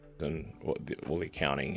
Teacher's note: So instead of accounting, we hear accounting. The first A there is a schwa sound, by the way.